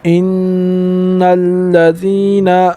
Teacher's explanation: ان الذین، یہاں پر بھی غنہ ہوگا، نون مشدد ہے اس وجہ سے یہاں پر غنہ ہوگا۔ غنہ کے معنی ہے ناک میں آواز لے جانا۔